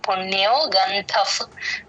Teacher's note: గంధఫ్ ఆ F sound అది ధ పక్కన ఉన్న విసర్గ ఎఫ్ సౌండ్ ప ముందు విసర్గ ఎప్పుడు వచ్చినా సరే ఎఫ్ సౌండ్ లాగే చెప్తాం